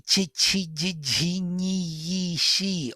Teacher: all the palatals. So tongue is pressing to the hard palate